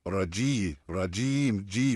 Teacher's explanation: ज बिल्कुल भी बारीक है, जुबान बीच से उठी है, पीछे से नहीं उठी है।